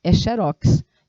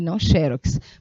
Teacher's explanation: Então, se ela não é acentuada, é porque a pronúncia dela é em oxítona